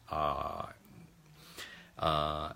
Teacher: Ah, or the first vowel sound, starts at the back of the throat.